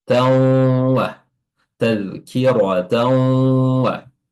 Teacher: Tan itu diidghamkan atau dimasukkan langsung ke huruf waw sehingga huruf huruf tanwinnya sudah tidak terlafazkan dan wawnya jadi bertasydid. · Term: bi gunnah